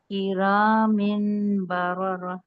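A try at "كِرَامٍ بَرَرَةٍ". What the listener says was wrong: کرامین نہیں، دیکھیں تنوین کے بعد با آ رہا ہے نا، تو جو نون کی آواز ہے وہ میم میں چینج ہو جائے گی.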